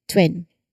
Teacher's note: You'll initiate the T sound here and then immediately round your lips for the W, creating that quick, seamless transition. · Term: TW cluster